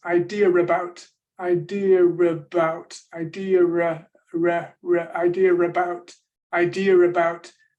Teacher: there seems to be an R appearing between idea and about it serves to separate those two vowels